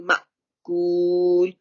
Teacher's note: मीम के बाद अलिफ के ऊपर सुकून है तो वो हमजा बन रहा है, तो उसको झटका देना